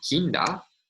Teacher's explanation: Japanese phonology neutralizes the nasals n and m, coronal and labial nasal, to a coronal nasal preceding a voiced coronal stop